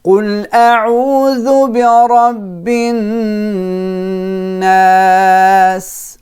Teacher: I'm holding the noon because it has a shadda.